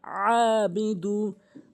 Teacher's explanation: আইনের উচ্চারণ হচ্ছে হলকের মাঝখান থেকে চাপ দিয়ে, আবিদু, আ আইন খারাজ জবর আ, আরেকটি হচ্ছে খারাজ জবর খারাজের উল্টো পেশ কিন্তু এক আলিফ টেনে পড়বেন।